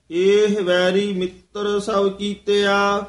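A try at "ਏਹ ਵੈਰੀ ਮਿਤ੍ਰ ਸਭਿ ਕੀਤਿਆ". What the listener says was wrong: एह वैरी, इथे ठमक लगेगी, मित्र सब कीते है, वैरी मित्र नहीं कहना है।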